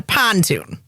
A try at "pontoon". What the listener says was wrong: Emphasis on the wrong syllable. A pontoon.